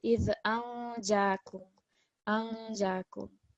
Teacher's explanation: we have noon sakin followed by jim, so we want a light nasal sound